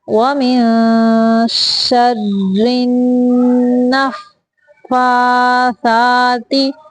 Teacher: نون کو فا سے ملائیں گے تھوڑی دیر تک کیونکہ نون کے اوپر بھی شاد ہے اور فا کے اوپر بھی۔